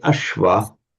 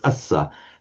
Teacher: You get the sh in Sanskrit, becomes, as we know, the s in Pali